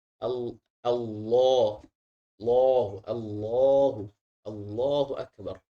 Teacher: lam tebal ketika dilafalkan disertai suara dari dalam kerongkongan